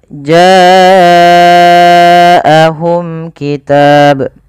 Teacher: Pada lafal bacaan jaahum ini wajib kita panjangkan sepanjang empat atau lima harakat. Kenapa? Karena ia ada bacaan yang dinamakan dengan mad wajib muttasil.